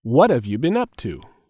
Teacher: there is a stress on what